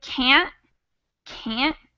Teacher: I'm saying a t but it's not a t in the same way that I would pronounce Turtle it's a stop in my throat · am not able to reduce that sound to awat so usually the difference between can and can't is more in the vowel sound than it is with that t because that t is really light · that t is really light we barely say it so when I say can't can't I'm saying a t but